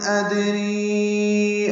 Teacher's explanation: ان ادری میں نون ساکن کے بعد حمزہ آنے کی وجہ سے اظہار ہے، دال ساکن پہ قلقلہ ہے، را باریک ہے اور یہ مد منفصل ہے۔